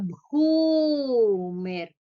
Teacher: Bhu is a Mahaprana, also Dirgha.